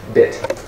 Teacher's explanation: The bit is shorter, your tongue muscle is relaxed.